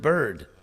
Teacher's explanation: the actual vowel in the word bird is the R. That's a vowel R phonetically.